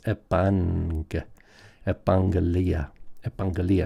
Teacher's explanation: because we have the double gamma, the first one turns into a nasal, right? We have nasalization, so it's epangelia.